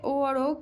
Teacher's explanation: ओ और ओ कंठ एवं ओष्ठ से निकलते हैं